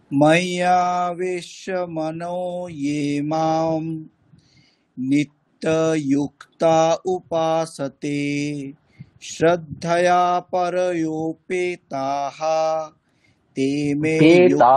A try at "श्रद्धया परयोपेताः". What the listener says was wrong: তাহা এখানে একটু ভুল হয়ে যাচ্ছে পরের লাইনে শুরুতে ভুল হয়ে যাচ্ছে শ্রদ্ধয়া পরয়ো পেতাহ পেতে গিয়ে নামছে আপনার তাতে গিয়ে নেমে যাচ্ছে শ্রদ্ধয়া পরয়ো পেতা এর কেমন একটা হয়ে যাচ্ছে পেতে গিয়ে নামাতে হবে শ্রদ্ধয়া পরয়ো পেতাহ বলুন